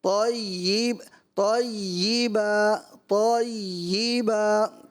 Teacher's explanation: دوسرا طیبہ، یہ نہیں ہے، یا کا مخرج یا کے نکلنے کی جگہ تیشی، یہ نہیں، زبان کا درمیان اور تالو کا درمیان